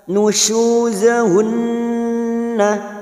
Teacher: nun yang bertasdid gunnah musaddadah kita tekan selama 3 harakat, kita dengungkan